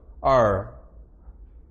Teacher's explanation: R 발음할 때 혀를 이런 식으로 구부리죠. R 이렇게 뒤쪽으로 구부리기 때문에 retroflex라고 부릅니다